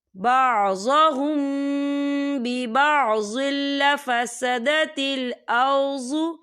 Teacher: تنوین کے بعد جو ہے لام آ رہا ہے، اور لام جو ہے حروف یرملون میں سے ہے، تو یہاں پر ادغام ہوگا، تو ہم اسے بنا غننے کے پڑھیں گے